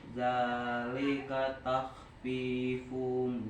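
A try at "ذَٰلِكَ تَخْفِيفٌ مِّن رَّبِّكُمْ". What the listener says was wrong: Ditahan fumnya idgham. Zalika takhfifum mir rabb. Banyak yang ditahan tuh.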